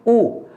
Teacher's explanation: ऊ बोलते ही आपका होठ क्या हो गया, गोल होकर के बाहर आ गया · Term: वृत्तमुखी